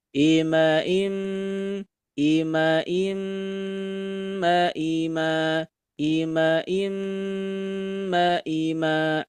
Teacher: cara membaca guna atau dengungan dibaca sebanyak dua harakat